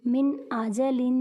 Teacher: میم، نون، زیر من، حمزہ، زبر آ، من آ، جیم، زبر جا، من آجا، لام، 2 زیر لن، من آجلن۔ نون ساکن کے بعد حمزہ حروف ہلکی میں سے ہے، اس لیے ہاں غنہ نہیں کریں گے